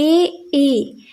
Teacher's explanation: ए और आई क्या है, कंठ से भी इसकी आवाज आ रही है और तालव्य से भी आ रही है। मतलब ऊपर की ओर हमारी वो हो रही है जिह्वा।